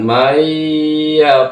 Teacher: nun mati bertemu dengan Ya maka hukum bacaannya adalah Idam bunah cara membacanya berdengung duadua ketukan